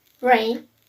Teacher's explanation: Its voice sound, its place of articulation is palato-alveolar, and its manner of articulation is approximate.